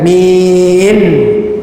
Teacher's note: Min dia tekan pada langit-langit ataupun gusi, atas gusi, gigi kita atas ada gusi, dia tekan situ, min, gitu.